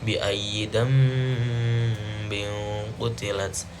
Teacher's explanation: Pada ayat ke-9 ini yang pertama yaitu iklab, karena di situ ada nun mati bertemu ba, dibacanya dengung